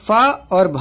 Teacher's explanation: फा और भा जो होंगे ये महाप्राण हो जाएंगे